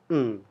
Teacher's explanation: atas atap mulut Nah karena lidah menyentuh atap mulut maka maka udara yang keluar dari tenggorokan berpindah ke hidung sehingga terciptalah bunyi n nah ini yang nantinya kita akan kenal sebagai bunyi nasal karena